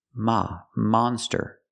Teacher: We have to use the open sound monster. Ah, like hot and stop. · Use the open sound, ah. Not the closed sound, but the open sound.